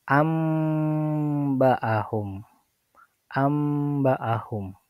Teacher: menggantikan huruf nun atau tanwin menjadi mim ya. · Nunnya tidak ada dan digantikan menjadi mim. Tapi tulisannya tetap ada nun sukunnya.